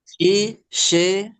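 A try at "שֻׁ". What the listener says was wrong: Ini bukan segol, ini titiknya diagonal, bunyinya U.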